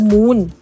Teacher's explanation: เราเรียกว่าเสียงลมที่ออกจากทางช่องจมูกนะคะ